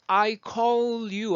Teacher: 뒤에 나오는 그 L하고요. call의 L하고 따라오는 반모음 Y하고 붙어요. 그래서 음가가 살아나는 거니까요